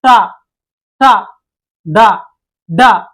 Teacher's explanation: వీటిని మనం శిరస్సు నుంచి పలకడం జరుగుద్ది అందుకే వీటిని మూర్ధన్యాలు అని పిలుస్తారండి